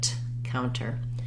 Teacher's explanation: use a true T with a burst of air